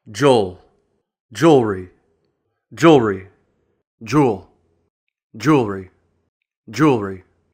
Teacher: Because the first syllable is stressed, and the second syllable includes the schwa sound, this often sounds like and becomes just one syllable. That second vowel gets reduced to almost nothing.